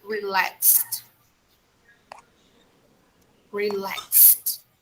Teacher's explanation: we should pronounce this final e d sound with the sound of t